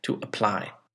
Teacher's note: here is to apply now again it has two syllables and the word stress did you hear it it was on the second syllable